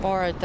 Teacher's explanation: Ela vai pra trás, ela faz uma retroflexão. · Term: R caipira